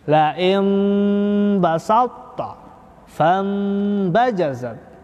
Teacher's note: Itu mim mati tanda kecil di atas itu untuk menandakan bahwa dia dibaca iqlab. Nun matinya diganti dengan bacaan mim.